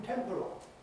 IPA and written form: ˈtemprəl (temporal)